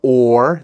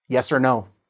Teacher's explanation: instead of the or, the long sound, we reduce it to er